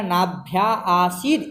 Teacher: पूर्व में नाभ्या में अंतिम में आ दीर्घ है और आसीद का आदि वाला आ दीर्घ है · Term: पिपीलिका विवृति